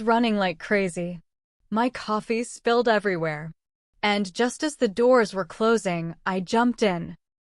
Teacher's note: The way she stretched running like crazy and sped up jumped in made the whole story feel alive.